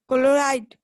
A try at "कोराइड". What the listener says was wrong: कोराइड का। क्लोराइड नहीं होता, कोराइड होता है।